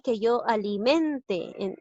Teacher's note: Aquí lleva la mayor fuerza de voz en la sílaba men.